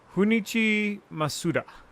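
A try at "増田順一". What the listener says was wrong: I think you pronounced it Spanish ways. I don't think it's an H in Japanese, but I don't know.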